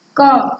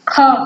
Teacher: क से ज्यादा टाइम यानी ज्यादा श्वास हमारी खा पे, यानी खा पे हम कुछ ज्यादा जोर देके बोलते हैं। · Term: महाप्राण